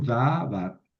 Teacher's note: Tenemos una sílaba abierta, da, y una sílaba cerrada, var. Aquí cae el acento, davar.